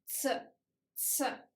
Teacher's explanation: And the last one, always hard consonant, is C. C consists of two sounds, T and S. We speak it very fast